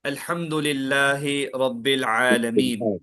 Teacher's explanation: کل آپ پڑھیں گے عین کا مخرج حلق، حلق سے ادا ہوتا عین. اگر یہ عین حلق سے ادا نہیں ہوا، آپ اس کو نارملی منہ سے پڑھ دیے، عالمین بول دیے، تو وہ عین جا کے حمزہ ہو جاتا